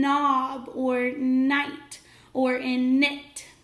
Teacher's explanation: but the two letters that make that sound is K n in this case our K is silent we don't hear it at all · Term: ghost letter